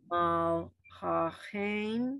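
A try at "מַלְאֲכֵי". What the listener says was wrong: I'm hearing another sound. just an ah. Mal ah. Just everybody remember an aleph and an ayin are silent letters. You hear just the vowel, just the vowel.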